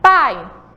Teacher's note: ou ir vou falar novamente pai então vocês vão observar que o som mais forte é da vogal a que é uma vogal base · o som mais forte é da vogal A, que é uma vogal base, certo? O som do I aparece bem pequenininho. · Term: semivogal